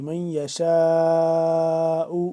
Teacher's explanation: شین الف مد زبر شاء، لمبا کر کے پڑھیں گے، مد ہے بڑی